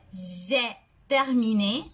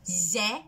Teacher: Ce sera important parce que le passé composé ne prononcera pas le sujet avec le E fermé, mais plutôt avec le E le plus ouvert, j'ai, parce que c'est l'auxiliaire, c'est le sujet, plus l'auxiliaire avoir.